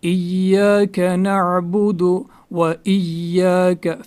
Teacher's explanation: اس کے بعد ایاک میں خاص دھیان رکھنا ہے کہ یا پہ جو تشدید ہے وہ ضروری اس کو اچھے سے پڑھنا ہے، وہ ضروری ہے اس کو اچھے سے پڑھنا، کیونکہ اگر ہم نے وہ اچھے سے نہیں پڑھی تشدید تو اس میں معنی بہت زیادہ خراب ہوتے ہیں. تو ایاک، یا پہ جھٹکا دینا ہے، یا پہ تشدید ہے، اس کو 2 بار پڑھیں گے